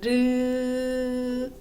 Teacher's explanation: 혀의 양 옆으로 공기를 흘려 보내면서 발음하는 소리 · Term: 유음